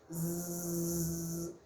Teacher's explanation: o som que a gente faz, aquele zumbido da abelha, por exemplo, é um som vozeado. Você pode fazer ele com a mão espalmada, aqui, com a sua mão aqui na altura da sua garganta, zzz, e você vai perceber que houve uma vibração.